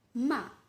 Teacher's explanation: the falling tone imagine the tone of your voice when you say an order such as stop · Fourth is the Ma, the falling tone.